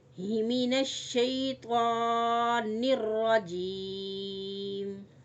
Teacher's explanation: اب طوا جو ہے اس کو پور پڑھیں گے، موٹا لفظ ہے، پور کر کے پڑھیں گے.